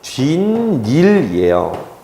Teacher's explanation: 그런데 시옷은 그냥 발음이 안 되고 디귿으로 바뀌어요. 그런데 디귿 니은은요, 만나면 니은 니은으로 바뀌어요. 비음화 때문에. 그래서 최종적인 발음은 뒷일이에요.